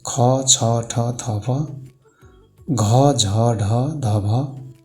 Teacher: धेरै सासद्वारा उच्चारण हुने वर्णहरू महाप्राण अन्तर्गत पर्दछन्